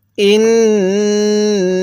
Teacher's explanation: হামজাকে নুনের সাথে লাগিয়ে গুন্নাহ করব, কারণ মিম এবং নুনের উপর তাজিদ হলে সেখানে গুন্নাহ করা ওয়াজিব হয়ে যায়।